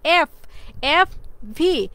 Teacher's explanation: যখন লেবিউডেন্টাল সাউন্ডগুলো উৎপন্ন করা হয় যেমন এফ দেখো এফ এফ ভি এই যে সাউন্ডগুলো উৎপন্ন করে দেখো আমাদের কিন্তু উপরের দাঁত কিন্তু আমাদের নিচের ঠোঁটের সাথে কন্টাক্ট করতেছে